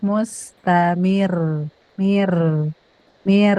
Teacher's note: ro-nya jangan ke gusi belakang, ke gusi depan